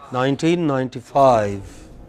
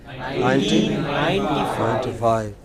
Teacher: The main stress will come on 5.